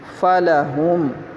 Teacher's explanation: ہا، درمیان حلق سے ادا کریں گے